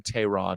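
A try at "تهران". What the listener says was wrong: There's no cha in Tehran, man. Just so you know, man. There's no cha. Tehran. Not Tehran. There's no cha. No, they don't, man. It's Tehran. Before Simigim, Tehran. Tehran. It's 2 syllables. I'm just saying, not Tehran, bro.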